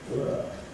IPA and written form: wɜː (were)